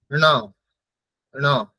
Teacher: ন এর সাথে মূর্ধা তো আছেই তার সাথে সাথে নাসিকা মানে একটু না কে উচ্চারণ হবে ন ন প্রথম থেকে আরেকবার